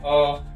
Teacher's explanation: हम लोग अ बोल रहे तो हमारा ओष्ठ गोल थोड़ी हो रहा है। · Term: अवृत्तामुखी